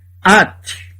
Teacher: É mudo, o Shevá aqui no começo é mudo. No caso, por exemplo, do pronome pessoal tu, feminino, at, não se lê o som do Shevá. É como se ele não estivesse aqui.